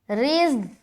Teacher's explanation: جیسے ہی را کو ہم زا سے ملائیں گے تو زا سختی کے ساتھ ادا ہوتا ہے